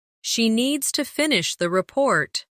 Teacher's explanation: stress needs and report and let the small words fall quietly